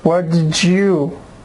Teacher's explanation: When D meets Y, gives J sound.